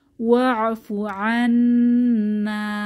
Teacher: নুনের উপরে তাসদীদ, ওয়াজিব গুন্নাহ এবং এক আলিফ টেনে পড়ব